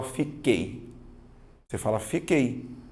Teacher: você vai notar que o som do U não aparece